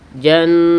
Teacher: ada bunyi desis anginnya